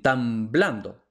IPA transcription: tam.ˈblan.do